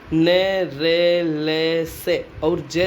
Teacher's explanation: जिह्वा नोक ऊपर की दंत पंक्ति से जुड़े हुए वत्स भाग को स्पर्श करती है वे वत्स्य व्यंजन ध्वनियाँ कहलाती है